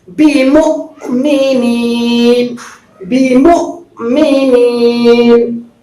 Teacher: اب یہ وما هم بمؤمنین، وما هم بمؤمنین، جزم اور سکون والے قاعدے میں آپ نے پڑھا کہ جس حرف پر بھی جزم ہو اور ساکن ہو وہ حرف جھٹکا کے ساتھ پڑھا جائے گا، یعنی حمزہ ساکنہ کو جھٹکا کے ساتھ پڑھیں گے۔ اب یہ حمزہ کبھی الف پر، کبھی واو پر، کبھی یا پر، تو یہاں پر واو پر ہے، بِمُؤْمِنِينَ، بِمُؤْمِنِينَ، یا مدہ۔